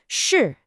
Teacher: Your tongue actually curls back just a little bit in your mouth, and that creates a harder, more forceful sound. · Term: retroflex sound